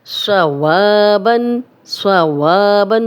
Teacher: صوابن، صوابن، صاد موٹا بھی ہے، سیٹی والا بھی ہے، وا الف مدہ ہے، 2 حرکات لمبا کریں گے، خالی الف پیچھے واو پہ زبر، اس لیے 2 حرکات لمبا ہو رہا ہے۔